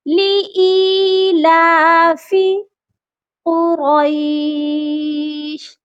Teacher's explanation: لی ایلافی، ای کو بنا کھینچے پڑھ دیتے ہیں. حمزہ کے ساتھ یا مدہ ہے، اسی لیے اس کو ہم کھینچ کر پڑھیں گے